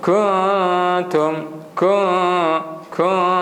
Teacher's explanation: nun mati bertemu ta. Jadi bacaan dia mestilah dengung, dan cara dengungnya macam tu.